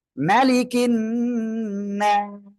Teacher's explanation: সাকিন দিয়ে পড়বো, ক্লিয়ার। এক আলিফ মদের পরের অক্ষরে ওয়াকফের কারণে সাকিন হচ্ছে, তিন আলিফ টেনে পড়বো, এখানে এক আলিফের জায়গায় তিন আলিফ।